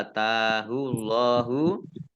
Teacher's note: Allahnya dibaca tebal karena harokat di depannya dhammah